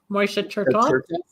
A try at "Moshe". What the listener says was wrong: It's not Moishe, it's Moshe, the Hebrew pronunciation, not the Yiddish, right?